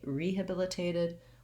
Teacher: but because we say rehabilitated we give a little bit of stress to that first syllable so i do say my e vowel